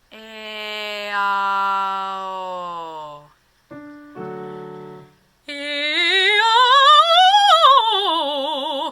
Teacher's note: So I'm not going to let the O pull the tongue back and get dark